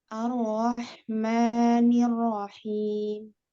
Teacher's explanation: Rohnya dibaca tebal ya, karena dia harokatnya fathah.